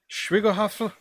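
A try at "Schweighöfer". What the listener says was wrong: It's called an umlaut. Schweihofer. The G is silent. Schweihofer because of the fucking umlaut.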